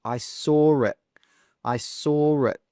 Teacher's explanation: We don't say I saw it. No, we add that R sound, an R sound. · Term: intrusion